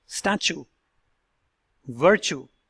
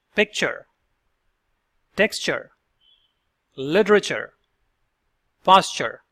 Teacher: In these words, the T sounds becomes a ch sound. The ch sound as in the word watchman.